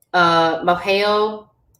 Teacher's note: the S turns to an H sound